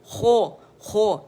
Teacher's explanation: نچلا ہونٹ پورا باہر میں نے نکال دیا، تو اس سے کیا آواز اتنی بھدی اور عجیب سی ہو گئی